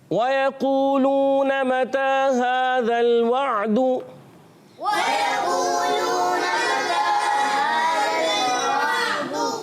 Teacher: واو کی ادائیگی ہوتی ہے ہونٹوں کی گولائی سے